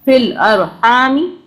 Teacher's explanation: را کو ہم نے رو باریک نہیں پڑھا